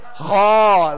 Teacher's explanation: مخرج ہے، غائن اور خا، خا کو پر پڑھنا ہے، اور احتیاط کیجئے گا کہ یہ خا کھا نہ بن جائے، یا زیادہ اس میں خرخراہٹ پیدا نہ ہو